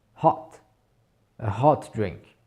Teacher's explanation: c'est vraiment un O qui est très ouvert, à la limite du A. Mais attention, il ne faut pas le prononcer A, il ne faut pas le prononcer hot, puisque à ce niveau-là, a hot, c'est un chapeau.